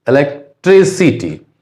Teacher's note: इलेक्ट्रिसिटी में एलेक में कम emphasis है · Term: सेकेंडरी स्ट्रेस